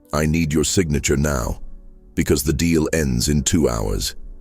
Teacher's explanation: Because a falling tone signals decisiveness and confidence, the tone of a leader. While a rising tone sounds like a question.